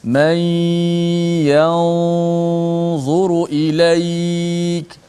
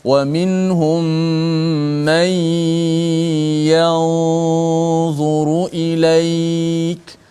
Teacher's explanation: Dia hanya disembunyikan di sisi huruf dha. Sebab tu gunnah kita bunyi seakan-akan tebal sedikit. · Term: ikhfa hakiki